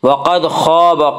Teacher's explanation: قاف کو پر پڑھیں گے، قاف حروف مستعلیہ میں سے ہے۔